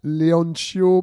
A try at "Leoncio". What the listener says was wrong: Le C se lit comme en français. Donc, c'est Leoncio. Tu l'as prononcé à l'italienne.